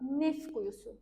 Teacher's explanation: Yəni t səsi düşür. Yəni t səsi olmur sözdə. Yəni bu tlar məsələn deyirsən ki, xoşbəxtlik düzdür tələffüz eləsək artıq t-nı deməməlisən. · Neft. T düşdü. Nəyə görə? Samit gəldiyi üçün.